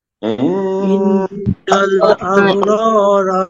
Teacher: দেখেন ইন্নাল এখানে ওয়াজিব গুন্না আব কলকলা হবে র র এখানে রর উপরে জবর রয়েছে মোটা করে পড়বেন আর এক আলিফ টান হবে আর এ রর উপরে জবর মোটা